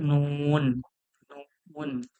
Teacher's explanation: নুন উচ্চারণ। জিহ্বার আগা উপরের তালুর সঙ্গে লাগিয়ে নুন উচ্চারণ হয়।